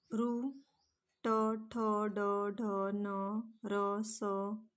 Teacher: हे मूर्धा या अवयवाला स्पर्श करत असल्यामुळे यांना मूर्धन्य असे म्हणतात.